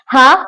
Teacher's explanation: हा हलक के दरमियानी हिस्से से मिडिल पार्ट से अदा हो रहा है